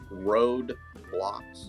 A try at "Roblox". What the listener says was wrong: Not road. Row.